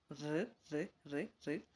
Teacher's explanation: І при багаторазовому повторенні ми викликаємо фрикативний звук р р р р, який без вібрації